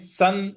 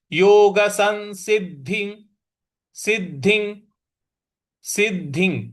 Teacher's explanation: योग स के ऊपर जो अनुस्वार है उसके आगे स है, इस वजह से इसका उच्चारण हम न ले आएंगे। सन ऐसे बोलेंगे योग संसिद्धि सिद्धि सिद्धि।